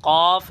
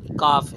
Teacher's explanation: قاف 2 نقطوں والا جو ہوتا ہے، اس کا مخرج کیا ہے؟ اس کا مخرج زبان کی جڑ اور تالو کے نرم حصے سے قاف ادا ہوتا ہے، اور کاف زبان کی جڑ اور تالو کے سخت حصے سے ادا ہوتا ہے